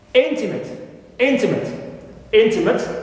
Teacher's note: here the first syllable is stressed